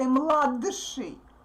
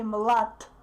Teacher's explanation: the previous consonant is influenced by the following consonant and becomes voiceless too. So it doesn't sound like dsh.